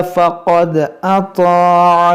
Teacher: इस अल्लाह के लाम को मोटा करेंगे क्योंकि यहाँ पर ज़बर है